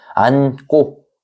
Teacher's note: 어간의 끝소리 니은 뒤에서 기억이 된 소리로 바뀌는 것.